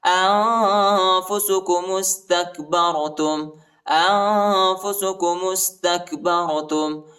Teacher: انفسکم استکبرتم، انفسکم استکبرتم، میم کو سین کے ساتھ ملائیں گے، الف نہیں پڑھا جاتا، تا کو کاف کے ساتھ ملائیں گے، اور با کو را کے ساتھ ملائیں گے، را کو موٹا پڑھیں گے